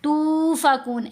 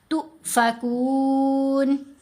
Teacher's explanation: یہاں تا کے اوپر پیش، آگے حمزہ ساکن. تا کو جب ہم حمزہ ساکن سے ملائیں گے تو جرک ہوگا، جھٹکا دیا جائے گا